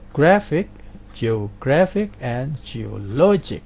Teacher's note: Jadi ini ik itu penekanannya di penultimate atau suku kata kedua dari belakang. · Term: penultimate syllable